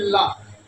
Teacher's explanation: जब हम ला बोलते हैं तो जीवा ऊपर जाकर तालु में चिपकती है और दोनों साइड से जीवा के ये दोनों किनारों से जो है वो हवा निकलती है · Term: पाशर्विक वर्ण